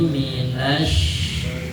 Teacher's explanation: Karena depannya ada huruf mati, maka lanjut atau loncat ke shin. Shin ini yang keluarnya dari wastul lisan, tengah-tengah lisan ya.